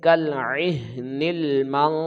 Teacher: اخفا آ گیا تو لہٰذا یہاں پہ ہم غنہ کریں گے، چھپا کر ہم اخفا کریں گے، غنہ ہوگا تو لمبائی ایک الف کے برابر ہوگی